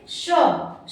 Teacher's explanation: तो आपकी जीवा रगड़ के आवाज निकालती है, बाहर निकालती है, ऊष्मा पैदा करती है, इसीलिए इसका नाम ऊष्म व्यंजन पड़ा।